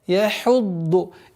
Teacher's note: Обратите внимание на твердое произношение дад. Яхудду. И впереди стоящий звук ха, мягкий звук.